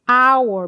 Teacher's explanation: apesar de você ter um h ali, o som que eu falei é a our, bem aberto de a